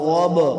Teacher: آگے غاد با زبر غاب، غاد موٹا، با حروف قلقلہ سے ساکن وقف ہوگا، قلقلہ ہوگا